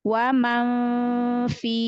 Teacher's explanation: Wa Iya, man fi, maka sudah di makhraj huruf fa. Wa man fi, jangan tebal karena fa kan adalah huruf istifal, huruf tipis